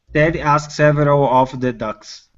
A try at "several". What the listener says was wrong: let's work on this r right in here